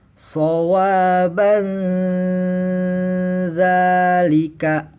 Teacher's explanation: Nah, di sini ada tanwin bertemu huruf zal. Maka tanwinnya di sini dibacanya samar beserta dengung dan ditahan seukuran 2 sampai 3 ketukan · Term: ikhfa